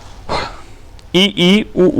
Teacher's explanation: वे स्वर जिनके उच्चारण में मुख वृत्त के समान बंद सा रहता है अर्थात सबसे कम खुलता है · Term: संवृत स्वर